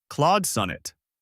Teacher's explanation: Keep the vowel in Claude rounded and the first syllable of sonnet strong.